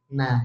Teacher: kalau na itu ah nempel ke gigi dan yang main bukan tepinya tapi ujungnya